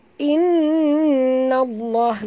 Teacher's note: nun bertasydid, wajib dengung